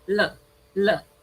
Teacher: The tip of your tongue touches the alveolar ridge. L, l. So the passage of air is blocked by the tongue and the alveolar ridge touching.